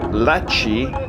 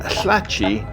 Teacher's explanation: there's also a contrast between regular lateral l and the lateral fricative, like the Welsh ll.